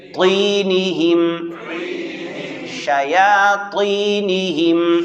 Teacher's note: طینہم قلقلے کے ساتھ موٹا ادا کرنا ہے